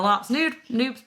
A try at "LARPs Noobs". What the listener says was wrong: It just very much sounded like you said, like, LARP nude.